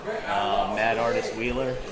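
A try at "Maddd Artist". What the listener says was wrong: Mad Artist. You gotta pronounce all the D's. Mad.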